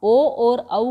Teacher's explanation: ओदौत्तो कंठ ओष्ठम, ओदौत्तो कंठ ओष्ठम। ओ और औ का उच्चारण कंठ और ओष्ठ से किया जाता है, और इनको कंठ ओष्ठ भी कहा जाता है।